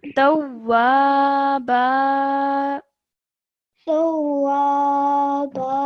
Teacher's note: The tanween is removed and only one stroke of fatha is pronounced.